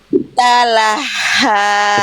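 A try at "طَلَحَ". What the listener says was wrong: Itu H kecil. Bunda coba ini di tenggorokan dalam. Di tenggorokan paling dalam itu Bunda di luar. Itu H kecil. Itu H kecil. Yang warna biru Ya, ini ha kecil. Ha kecil bertasydid, harokatnya fathah.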